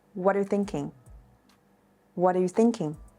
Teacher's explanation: the e sound and R sound are not fully pronounced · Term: shortening vowels